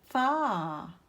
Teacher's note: For fa, you have to touch the upper teeth to the lower lip.